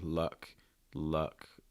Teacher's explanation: You want to be super, super relaxed. This is, again, the sound that you make when you're not really stressing anything. Okay, you're just being like, notice my mouth's very relaxed. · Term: schwa type sound